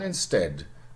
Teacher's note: what has happened is a shortening after the first phase of the Great Vowel Shift